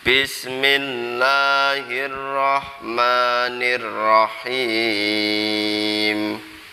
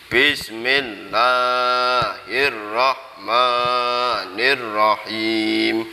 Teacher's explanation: Ketika membaca bismillah itu enggak boleh terlalu panjang, cukup 2 harokat atau 1 alif atau 2 hitungan.